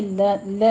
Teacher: لا الف مدہ ہے، 2 کاؤنٹ کرنے ہیں، منہ کھول کے ادا کیجیے